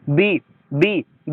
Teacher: दोनों लिप एक दूसरे से मिलकर अलग होते हैं। बी बी बी दोनों लिप टच होते हैं। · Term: लेबियल साउंड्स